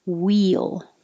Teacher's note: I put this so you'd remember that it's we, and then your tongue has to slide down to make the L